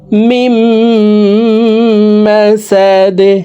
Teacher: দাল কলকলার হারফ নিচের দিকে ধাবিত করে দালকে সাকিন করে ফেলব